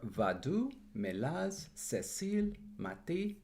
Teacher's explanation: all of them stressed on the final syllable